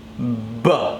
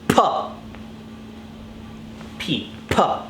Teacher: The difference is that to make the B sound, you have to use your voice.